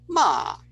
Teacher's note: you can produce something where down and up, ma.